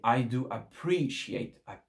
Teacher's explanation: L'accent tonique sur le PR.